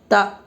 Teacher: زبر کو جلدی پڑھیں، تھوڑا بھی نہ کھینچیں، زبر کی آواز اوپر کو اٹھتی ہے